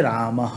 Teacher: यह विसर्ग जो है वह अ के बाद आया हुआ है, तो इसका उच्चारण हकार के समान हो जाएगा। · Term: विसर्जनीय